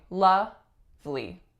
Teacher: in actuality that middle syllable is entirely omitted